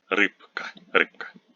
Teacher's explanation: voiced consonants like b before a voiceless consonant like k become voiceless.